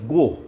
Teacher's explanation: जब हम गोविंद में से गो कहेंगे ध्वनि गले से निकलती है